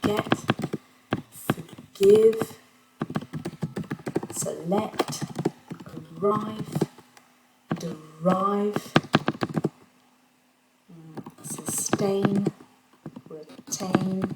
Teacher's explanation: On va avoir un accent sur la deuxième syllabe.